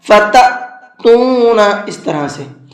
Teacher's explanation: یوم ينفخ، نون کے اندر اخفا کر کے پڑھیں گے، فی الصور، صاد کو پر کر کے پڑھیں گے، فتأتون، یہاں پر حمزہ ساکن ہے اور حمزہ ساکن ہمیشہ جھٹکے کے ساتھ میں پڑھا جاتا ہے